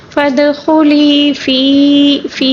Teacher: یا مدہ بھی، یا مدہ کی ادائیگی بھی صحیح کریں گے کیونکہ یا مدہ کو ایک الف کے برابر کھینچ کر پڑھنا ہوگا